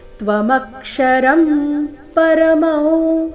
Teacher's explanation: ತ್ವಮಕ್ಷರಂ ಮೇಲೆ ಆಘಾತ ಅನುಸ್ವಾರ ಉಚ್ಚಾರಣೆ ಮ ರೀತಿ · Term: ನಾಸಿಕಾ ವ